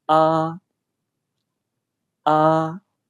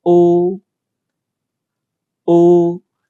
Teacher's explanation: For a, your lips are not rounded. But for o, your lips are rounded.